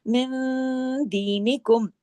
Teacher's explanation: نون ساکن کے بعد جب دال ہے تو اخفا حقیقی غنہ کاملہ سیکنڈ لیول کا غنہ ہوگا